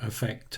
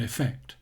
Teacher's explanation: the first one uses a schwa and the second one is an e sound